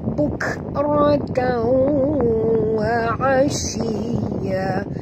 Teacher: Ra tebal, tanwin bertemu dengan waw, kita kena masukkan sepenuhnya bunyi tanwin baris 2 di atas ini ke dalam waw disertai dengung 2 harakat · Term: idgham ma'al gunnah